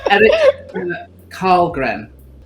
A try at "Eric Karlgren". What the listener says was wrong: This name is pronounced Eric Shellgren. Another SH sound.